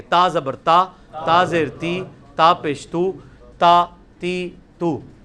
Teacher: یہ تا یہ جتنی لینتھ ہے نا یہ آدھا الف ہے